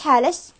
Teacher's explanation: حرف الكاف يبدلوها بحرف الشين يعني بالنسبه للمؤنث